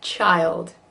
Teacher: Really 2 syllables there, because we just put a Y and a schwa in there